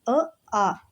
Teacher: ಇವು ಎರಡು ಕೂಡ ಕಂಠದಿಂದ ಉತ್ಪತ್ತಿಯಾಗುವಂತಹ ಅಕ್ಷರಗಳು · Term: ಕಂಠ್ಯ